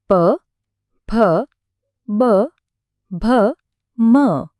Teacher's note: બંને હોઠ એકબીજાને સ્પર્શ્યા એટલે કે ગળાથી શરૂ થયેલી અવાજની આખી યાત્રા હોઠ પર આવીને પૂરી થઈ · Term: પ વર્ગ